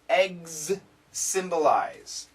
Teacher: So this is a Z sound and this is an S sound. Eggs, vibrating Z, symbolize, no vibration, and S.